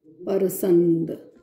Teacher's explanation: र का आगम भोजपुरी में प्राय देखा जाता है, भोजपुरी भाषा की प्रकृति है